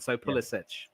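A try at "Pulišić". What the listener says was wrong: think the C isn't pronounced. It's a silent C. It's a silent consonant. I think they don't pronounce the C in it.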